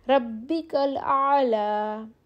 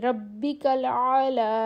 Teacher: بغیر حرکت کے یا سے پہلے زبر ہو وقف میں کھڑی زبر کے برابر لمبا کر کے پڑھیں گے یعنی کہ اس پہ کھڑی زبر آ جائے گی ربک الاعلی.